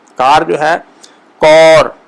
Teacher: اس میں او کی طرف آئے گا